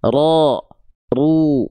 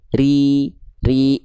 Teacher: Kalau huruf ro berharakat baris bawah vokalnya i, tandanya dia dibaca dengan keadaan yang tipis. Jadi jangan sampai dibaca tebal.